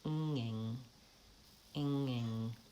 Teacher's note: So I'm starting with the ng and releasing into the vowel. It's basically like a very light lowering of the tongue and raising it back up for another ng.